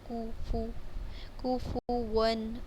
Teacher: کاف کی پیش اور فا کی پیش کو دونوں کو ہمیں ہونٹوں کو گول کر کے پڑھنا ہے۔ کوفو، کوفون، اور آگے واؤ پر بھی ہونٹ گول کرنے ہیں۔